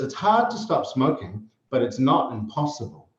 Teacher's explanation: Because the stress is on hard, this contrasts with impossible, okay? So the speaker is literally contrasting this idea, really, really difficult, with the idea of not impossible, right? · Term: contrast of stress